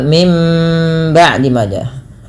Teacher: Kemudian pada lafal mim ba'di maja, bunyi suara nunnya diganti dengan suara mim, dan ini kita istilahkan dengan bacaan iklab dan ditahan suara nya 2 harokat.